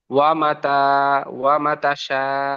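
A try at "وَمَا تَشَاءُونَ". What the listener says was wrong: ওমা, মিমটি আলিফ মাদ্দা, পড়তে গিয়ে এখানে মিমের আলিফ মাদ্দা টান ছেড়ে যাচ্ছে। ওয়ামা তাশাউনা।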